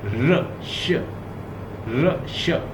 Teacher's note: the tip of the tongue interact with the hard palate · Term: पोस्ट अल्वीलर